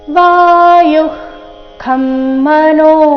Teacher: ವಿಸರ್ಗದ ನಂತರ ಖ ಅಥವಾ ಕ ಬಂದ್ರೆ ವಿಸರ್ಗದ ಉಚ್ಚಾರಣೆ ಅರ್ಧ ಖ ರೀತಿ ಮಾಡಬೇಕು